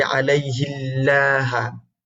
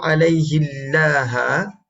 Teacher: Bila sebut alaihillaha, tidakkah ini menyebabkan lafaz Allah ini disebut dengan dalam bentuk muraqqaqah, tarqiq, dalam bentuk yang lembut